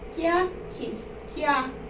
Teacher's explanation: terminou em vogal átona e a outra sílaba também tem uma vogal átona. A gente vai unir essas duas.